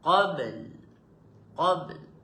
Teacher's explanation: Ada ba, ada lam bunyi. Ah, jangan bunyi ba saja, tak bunyi lam. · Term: qalqalah sugra